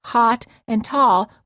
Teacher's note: in many parts of the United States the A and A are pronounced the same for example many Americans pronounce hot and Tall with the same · many Americans pronounce hot and tall with the same vowel sound. The o sound.